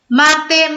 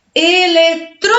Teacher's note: Então, essas são palavras proparoxítonas, que é a antepenúltima sílaba, é a mais forte. A sílaba tônica está na antepenúltima sílaba.